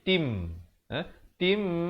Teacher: Di sini hukumnya idgham bi gunnah. Masuk beserta dengung dua harakat. Daripada tin jadi tim.